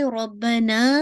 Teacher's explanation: ना को पूरा आपने 2 काउंट पढ़ना है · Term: अलिफ मद्दिया